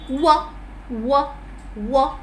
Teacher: the lips are rounded. W, W, W, and the back part of the tongue is a little raised towards the soft palate. The back part of the tongue, and hence it is a little different from the way we pronounce the other semi-vowel Y.